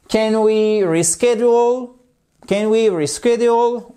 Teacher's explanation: On remonte l'intonation puisque c'est une question fermée, c'est-à-dire une question qui répond par oui ou par non.